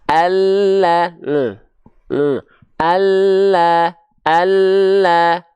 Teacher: Lam itu dilafalkan dari tepi lidah kita bagian yang kiri. Tepi lidah depannya, bukan seluruh tepi lidah, bukan samping lidah semuanya. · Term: lam hijaiyah